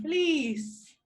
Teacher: when you say the vowel in fleece right your lips are widespread